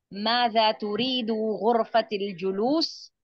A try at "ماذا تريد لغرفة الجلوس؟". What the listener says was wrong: لی چھوڑ دیا آپ نے. ماذا تريد لغرفة الجلوس. لغرفة الجلوس.